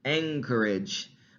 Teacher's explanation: that n sound becomes an g sound an ing anchorage because the s that ch that creates the